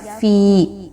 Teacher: یاد رکھیے کہ جب بھی یا پر جزم کا نشان ہوگا اور اس سے پہلے والے حرف کے نیچے زیر آئے گی تو اس کو ہم یا مدہ کہتے ہیں۔ دو حرکت کے برابر اس کی حرکت کو رکھتے ہیں، نہ کم اور نہ زیادہ